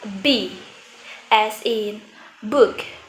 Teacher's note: and when pronouncing a vo consonant like B As in book our vocal cord Come Together creating a buzing or vibration